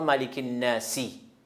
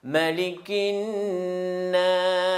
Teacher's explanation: Ici, on ne prononce pas ملك الناسي. On change soukoun parce qu'on s'arrête.